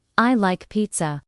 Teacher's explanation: Let your voice fall gently at the end. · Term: intonation